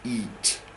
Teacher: The front of the tongue is high up, okay? And it sort of slopes away. So the back is low down